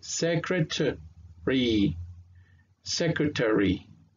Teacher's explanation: So, entonces diríamos se cre, y aquí se pierde el sonido del A, suena muy bajito, por eso no viene el sonido fonético